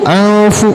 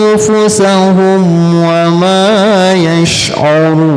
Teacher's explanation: Dan mati menghadapi fa ya. Gunnahnya, dengungnya deketin ke huruf fa.